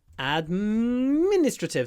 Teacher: the stress is on the second syllable administrative so we stretch the M administrative ad Min in general